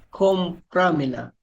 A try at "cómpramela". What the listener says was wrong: Kasi sinasabi mo, compramela na sa pra. Compramela.